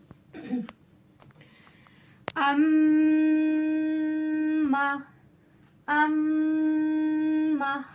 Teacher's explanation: हमारी आवाज कहाँ जा रही है? नाक की जड़ में जा रही है। एक अलिफ के मिकदार के बराबर अम्मा, अम्मा, ठीक है। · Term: गुनने का साउंड